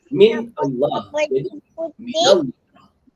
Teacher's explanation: Apabila dua sukun bertemu dalam keadaan wasal, huruf sukun yang pertama diubah menjadi kasrah menurut keumuman riwayat, kecuali apabila huruf pertamanya kata min atau mim jama'. Kata min apabila bertemu dengan sukun, nun sakinahnya diubah menjadi fathah.